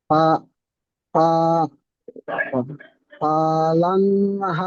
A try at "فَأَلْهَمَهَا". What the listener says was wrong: ফাআলহামাহা, ফাল্লা নয়, ফাআলহামাহা।